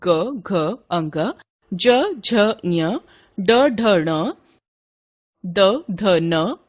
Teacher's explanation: उच्चारण में स्वर तंत्रियों में कंपन होता है, अर्थात नाद उत्पन्न होता है, उनको घोष यानी सघोष व्यंजन कहते हैं।